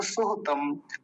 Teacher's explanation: सुहतम जल्दी बोला जाएगा, दोनों मात्राएं ह्रस्व हैं, छोटे ऊ की मात्राएं हैं